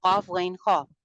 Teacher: زبان جڑ سے بلند ہے لیکن زبان سینٹر جو اس کا ہے نا، سینٹر سے پیلٹ کی طرف نہیں اٹھی ہوئی، یعنی یہ درمیان میں سے اوپر تالو کے ساتھ نہیں لگ رہی. منہ کا اگلا حصہ خالی ہے.